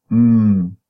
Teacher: voice nasal and then mmm the place we know bilabial bilabial so we call a bilabial voiced nasal sound